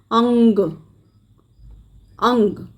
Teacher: हमारा जो साउंड है वो नाक से आता हुआ सुनाई देता है। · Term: नासिकीय ध्वनियाँ